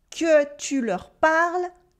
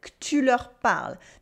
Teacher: Here we have our first informal French pronunciation, which is cutting the E letter. Instead of saying the correct que tu leur parles, que tu leur parles, she simply says que tu leur parles, because we like to speak a bit faster in French.